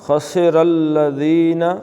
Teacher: خسرہ کے را کو موٹا اور الذین کے لام کو پتلا پڑھنا ہے